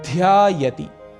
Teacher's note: ध अक्षर महाप्राण है, इसीलिए यहां पर ध्वनि एम्फेसिस थोड़ा अधिक होगा